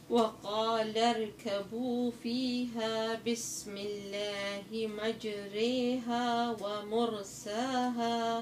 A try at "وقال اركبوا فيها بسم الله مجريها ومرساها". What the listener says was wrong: ممتاز.